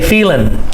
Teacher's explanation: Many times the ing, we cut off the G sound.